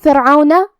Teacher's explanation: کلمت فرعون، یہاں را ساکن ہے تو را کا حکم ہے ترقیق کیونکہ اس پہ جزم ہے، لیکن اس کے پہلے والے حرف کے نیچے زیر ہے تو ہمیں را کو پتلی آواز میں پڑھنا ہے